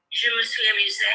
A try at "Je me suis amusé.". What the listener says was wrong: Lovely.